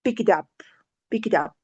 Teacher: so the rising intonation is at the end